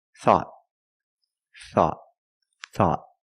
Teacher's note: at the end the tongue goes up and makes a stop